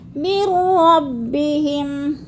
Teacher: رَبِّهِمْ، میم کو را کے ساتھ ملا کر ادغام کرنا ہے، درمیان والا نون ساکن نہیں پڑھا جائے گا، لکھنے میں آتا ہے اور پڑھنے میں نہیں آتا